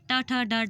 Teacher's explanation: च वर्ण च, छ, ज, झ हमारे तालु को स्पर्श करके निकलती है। ट वर्ग ट, ठ, ड, ढ मूर्धा को स्पर्श करके निकलती है